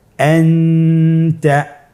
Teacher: নুন সাকিন তানবিনকে নাকের ভিতরে লুকিয়ে গুণনার সহিত পড়তে হবে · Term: ইখফা